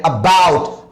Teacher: आ पे धीमे से जोड़ दे रहे हैं और बी पे ज्यादा जोड़ दे रहे हैं